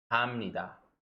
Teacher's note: Whenever you have the consonant biup or the strong consonant piup followed by a nian or a mium, it will become pronounced as a mium.